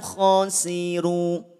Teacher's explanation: Kalau berhenti di khasiru, ro cukup 2 harokat.